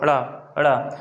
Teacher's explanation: ऐसा लगता है हमें कि इनको उच्चारण करते समय हमारी जीभ अंदर से बाहर की ओर फेंक रही है, इसलिए इसको बोलते हैं उच्छिप्त या फेंका हुआ।